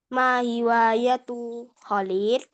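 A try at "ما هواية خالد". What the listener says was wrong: Khalidin, kho-nya panjang. Khalidin.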